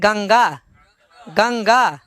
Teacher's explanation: अनुस्वार का उच्चारण स्थान नासिका होगा